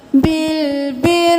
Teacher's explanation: اتا مورونن، رو کو موٹا پڑھنا ہے، مورونن، واو مدہ ہے تو مرونن نہیں کریں گے، مرو، اتأمرونن، نون پہ تشدید ہے غنہ، نن ناسا، الف مدہ کھینچے، نا ناسا بالبر، را کے نیچے زیر ہے تو ہم باریک پڑھیں گے